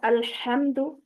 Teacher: ہا وسط حلق کا حرف ہے